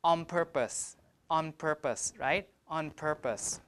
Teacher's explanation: the N will change to an M to match the place of articulation of the next sound, which is P. P is a bilabial, so we pronounce it like on purpose.